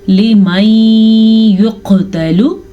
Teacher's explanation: लिमन युक़तलु, काफ पे कलकला हो रहा है, काफ को मोटा भी पढ़ेंगे। ता और लाम को लंबा नहीं करेंगे क्योंकि ता पे ज़बर है और लाम पे सिर्फ और सिर्फ पेश।